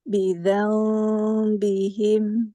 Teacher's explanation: Sedikit koreksi, gigit lidah pada za.